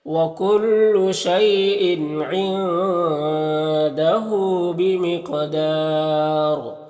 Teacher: اور ان کی تنوین میں اظہار حقیقی ہو رہا ہے، نون میں اخفا ہو رہا ہے، ہاں الٹا پیش ہے جو واو مدہ کی طرح ہوتا ہے، قاف حروف مستعلیہ میں سے ہے، پر پڑھیں گے، اور قاف حروف قلقلہ میں سے ہے، قاف میں قلقلہ بھی کریں گے۔ یہاں پر وقف کریں گے تو را مد عارض وقفی ہوگا اور را کو پر پڑھیں گے